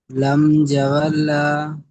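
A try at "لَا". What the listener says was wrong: অক্ষরটা, লাম অক্ষরটাকে তিন আলিফ পরিমাণ টান দিয়ে বলতে হবে, লাম জাবার লা।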